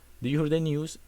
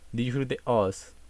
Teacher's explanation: The Y sound or the E sound sometimes is eliminated or not pronounced, like in the sentence "Do you hear the news?" that is pronounced like "Do you hear the us?" Nevertheless, this version of English is easily understood by other English speakers.